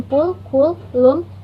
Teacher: lips are rounded in the articulation of P, K, and I in pull, cool, loom, respectively, due to the occurrence of rounded vowel U immediately after this consonant segment.